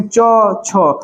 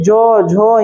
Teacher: जैसे अगर हम लोग बात करेंगे च, छ, तो ये दोनों में कम समय लगता है, कम झंकार की ध्वनि उत्पन्न होती है। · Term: अघोष वर्ण